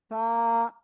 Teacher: জিহ্বার আগা উপরে দুই দাঁতের আগায় লাগিয়ে নরম আওয়াজে উচ্চারণ করতে হবে সা